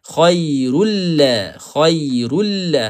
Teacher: Tanwin bertemu dengan lam. Yang ni tak perlu dengung. · Tanwin bertemu dengan lam, idgham bila gunnah. Khairul la, tak ada suara naik ke hidung. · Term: Idgham bila ghunnah